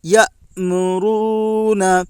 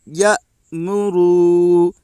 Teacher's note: حمزہ کے اوپر جزم ہے، جزم والے حرف کو پیچھے والے حرف سے ملا کر پڑھیں۔ حمزہ ساکنہ کے پڑھنے میں جھٹکا ہوتا ہے۔ میم کے اوپر پیش ہے، پیش کو جلدی پڑھیں، تھوڑا بھی نہ کھینچیں۔